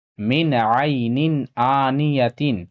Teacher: یا ساکن سے پہلے زبر ہے، اسے جلد پڑھنا ہے، یالین ہوگا